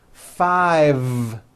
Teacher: I said five with a voiced V